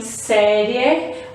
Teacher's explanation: Então, as semivogais, ela tem uma pronúncia mais fraca, como eu falei aqui, série. Observa que o I, eu falo ele fraquinho. Quem tem mais força é a vogal E. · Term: semivogal